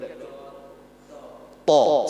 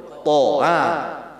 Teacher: Kalau to dia bulat ujung lidah bertemu dengan pangkal gigi seri atas